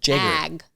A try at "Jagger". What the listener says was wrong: Not Jaeger, like Jaeger bombs. It's Jagger. Never in my life would I say Jaeger. Oh, it's Jagger.